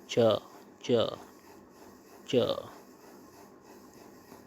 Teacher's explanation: इनमें से च वर्ग के वर्णों का स्थल स्थान च वर्ग तालु से च वर्ग के वर्णों का उच्चारण स्थान तालु से है। जिन ध्वनियों के उच्चारण में जीवा का मध्य भाग तालु स्पर्श होता है।